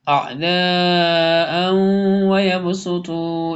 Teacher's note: تنوین کے بعد واو آ رہا ہے اس لیے ادغام یرملون ہوگا